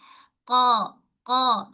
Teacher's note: Pangkal lidah kita sentuh pada lelangit lembut. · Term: huruf qaf